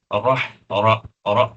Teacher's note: اور اس کے متعلق بھی آپ نے پڑھا ہے کہ را پر جب زبر ہوتی ہے تو وہ پر پڑھا جاتا ہے، اس کو یہاں پر ہم زبر کے اعتبار سے پر پڑھیں گے، رح رح پڑھیں گے، رح، پھر ہا کی آواز کو ہم وسط حلق میں لے جائیں گے، یعنی حلق کے بیچ میں لے جائیں گے۔